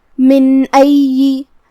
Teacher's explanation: اظہار کا معنی ہے ظاہر کرنا، تو ہم یہاں نون ظاہر کریں گے اور بغیر غنہ سے یہ حکم کو ادا کریں گے